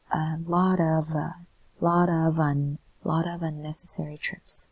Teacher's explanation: That the of sounds like a V ending sound